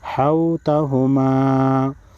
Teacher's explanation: یہ واو ساکن ہے، جب جس حرف پر جزم ہو اس حرف کو ساکن حرف کہتے ہیں، تو یہ واو ساکن ہے۔ واو ساکن سے پہلے جب پیش ہو تو واو مدہ کہلاتا ہے اور واو مدہ 1 الف کے مقدار کھینچ کر پڑھا جاتا ہے